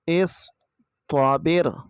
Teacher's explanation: حمزہ، صاد زیر اس، طا زبر طا، اس طا، با، را زیر بر، اس طابر، اس صاد کی آواز آئے گی، سین کی طرح نہیں پڑھنا، اس طابر۔ صاد کی آواز جو ہے یہ سخت آواز آئے گی کیونکہ یہ حروف صفیریہ میں سے ہے اور موٹے حروف میں بھی ہے